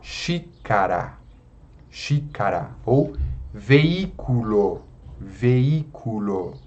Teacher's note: a tonicidade, a sílaba forte, cai na antepenúltima sílaba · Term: proparoxítona